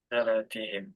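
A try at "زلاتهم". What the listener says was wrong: Nah ini lamnya tasdid. Zallatihim.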